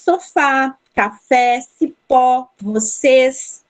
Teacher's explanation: A sílaba tônica é a última, é a que eu pronunciei com mais intensidade.